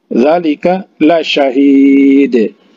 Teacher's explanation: Za 2 harokat karena matobi'i alif atau mad asli.